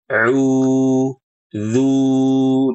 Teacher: Yang pertama saat baca auzu. Ibu kurang monyong. Monyongnya udah udah monyong tapi kurang.